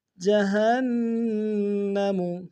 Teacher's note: نون مشدد ہے، غنہ کریں گے جہنم میں